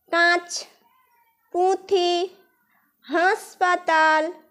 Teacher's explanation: কাঁচ, পুঁথি, হাসপাতাল প্রভৃতি শব্দের উচ্চারণে অনাবশ্যকভাবে অনুনাসিকতা লক্ষ্য করা যায়